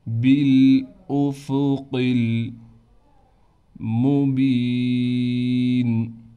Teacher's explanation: با کو لام سے ملائیں گے، لام کے بعد حمزہ ہے، حمزہ کو صاف کر کے بغیر کھینچے پڑھنا ہے۔